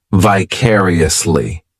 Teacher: this adverb has five syllables and the stress is on that second syllable vicariously the third syllable it's like that letter I just had